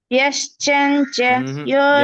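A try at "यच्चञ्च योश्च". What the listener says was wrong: యశ్చంచ కాదు, యశ్చంచ కాదు, యచ్చం. యచ్చంచయోశ్చ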